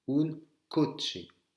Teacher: quand vous voyez un CH, c'est comme si ça se prononçait TCH